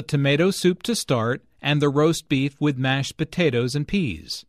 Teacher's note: Notice that tomato soup, roast beef, mashed potatoes and peas are stressed because the food order is the important information here.